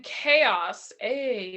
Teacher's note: requires a slightly lower tongue position than E, with a resulting larger space in the front of the mouth, the oral cavity.